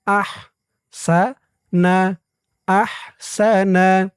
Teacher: হার আওয়াজটা গলার ভিতর থেকে চিকুন হয়ে বের হবে